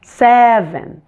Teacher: 7th is a two syllable word so we want to make sure that we stress the first syllable